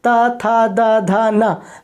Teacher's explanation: आप बोल के देखो, ता था दा धा ना, हमारे जो जीभ है दांत को टच होती है, तो उसे हमने दंतव्य कहा है।